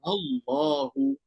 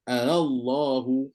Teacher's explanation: Kena baca panjang 6 harakat. Kena ingat baca 6 harakat sebab pakai hukum mad lazim macam 6 harakat.